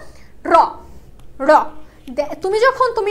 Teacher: আমাদের এই জিহ্বাটা দাঁতের যে গোড়া রয়েছে ওই গোড়ায় এসে একটা বাড়ি দিবে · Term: তাড়নজাত ধ্বনি